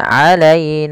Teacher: lembutkan pada lafal ya yang didahului dengan fathah karena ia bacaan lin